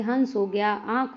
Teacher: इनका उच्चारण अनुस्वार की अपेक्षा हल्का होता है। हवा, नाक और मुंह दोनों से निकलती है। जैसे हंस हो गया, आंख हो गया। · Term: अनुनासिक